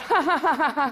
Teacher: you find nasality in posed laughter, that kind of ha-ha-ha-ha-ha sound